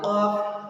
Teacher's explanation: قاف کو بھی یہاں پہ کوّا لٹک رہا ہے، اس کے نیچے سے قاف نکلے گا